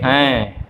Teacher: थोड़ा सा नाक में भी वो ध्वनि आती है, नाक के द्वारा भी ध्वनि का उच्चारण किया जाता है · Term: अनुस्वार